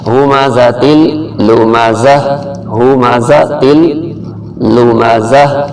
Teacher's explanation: یہ ہا جو ہے یہ حلق کے آخر سے نکلتا ہے